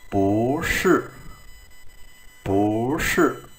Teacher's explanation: bao giờ hai thanh bốn đi liền với nhau thì thanh đầu tiên sẽ phải biến thành thanh hai